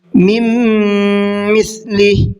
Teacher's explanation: مِن مِثْلِهِ، دوسری جگہ پر بھی ادغام کا قاعدہ ہے، میم کے اندر بھی نون ساکن کے بعد میں میم آ رہا ہے تو یہاں پر بھی غنہ کر کے ہی پڑھنا ہے